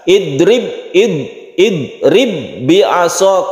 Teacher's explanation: ba bertemu ba maka membacanya masuk ke huruf berikutnya sehingga qalqalnya hilang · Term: idgham mutamasilan